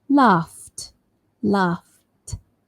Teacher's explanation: Remember, f is a voiceless sound. So the end is also voiceless. T. Laughed, laughed.